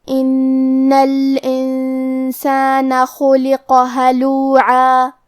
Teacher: نون پہ تشدید ہے تو ہمیں یہ حرف کو دو حرف کے برابر پڑھنا ہے